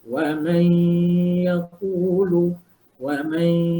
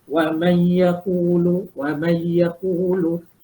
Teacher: nun mati jumpa ya. Idgham ma'al ghunnah. Kita kena masukkan dan dengung 2 harakat.